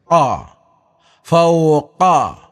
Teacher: കാഫ് തൊണ്ടയിൽ നിന്ന് തന്നെ എടുത്ത് ഉച്ചരിക്കേണ്ട അക്ഷരമാണ് കാ ഫൗ എന്ന രൂപത്തിൽ ഉച്ചരിക്കണം അതുപോലെ കാഫോ വയുടെ മധ്യഭാഗത്ത് അഥവാ വയുടെ